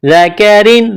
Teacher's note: ذال کو نرم کرنا ہے، کاف کو باریک کرنا ہے، بغیر کھینچ کے پڑھنا ہے